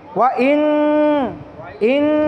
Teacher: নুন সাকিনকে নাকের ভিতর লুকায় পড়তে হবে, গুণনা করে পড়তে হবে।